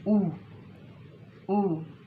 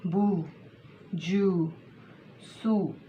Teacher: इस पेश को होंठों को गोल करके इसको अदा करना है। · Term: राउंडिंग ऑफ द लिप्स